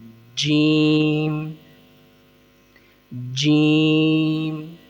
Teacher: زبان کے درمیانی حصے کو اوپر کے تالو کے درمیانی حصے سے ملا کر آواز نکالنی ہے